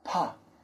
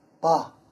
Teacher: the P is more having the air come out of the mouth